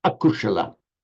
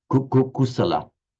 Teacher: Pali doesn't have a sh sound because it comes as s, kusala.